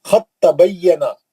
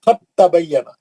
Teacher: दाल साकिन है उसके बाद ता आ गया दोनों का मखराज एक ही है तो साकिन गायब हो जाएगा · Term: इदगाम में मुजानिस